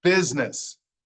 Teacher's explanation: But the S sounds like a Z and the U sounds like an I. So it's business, not busyness.